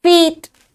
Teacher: इसमें वही डायग्राफ है लेकिन साउंड थोड़ी सी स्लाइटली लॉन्गर है